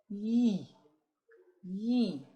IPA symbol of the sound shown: j